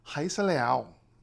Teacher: L at the end of a syllable becomes O, so Rayssa Leal.